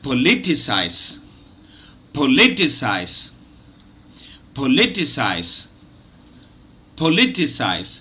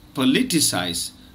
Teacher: Remember, it's a 4 syllable word and the second syllable is stressed.